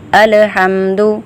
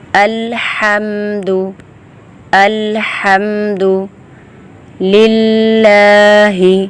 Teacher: الحمد، تو یہ غلط ہے۔ لام کی دوسری آواز نہیں آنی چاہیے، ڈبل آواز نہیں آنی چاہیے، اس کو مضبوطی سے پڑھنا ہے۔